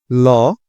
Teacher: যে ধ্বনির উচ্চারণের সময় জিহ্বার ডগা দাঁতের গোড়ায় আটকিয়ে থাকে এবং বায়ুপ্রবাহ জিহ্বার পাশ দিয়ে বের হয়ে যায় তাকে পার্শ্বিক ধ্বনি বলে।